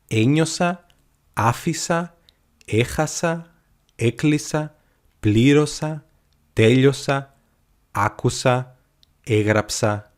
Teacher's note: we use the ending of the past, a, and we put the stress on the third syllable from the end